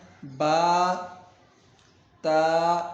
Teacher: ایک الف کھینچ کر پڑھیں گے